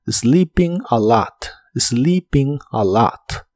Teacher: La doble E del verbo sleeping se pronuncia como una I larga o doble, y la I se pronuncia como una I corta. La O de a lot se pronuncia como una A profunda.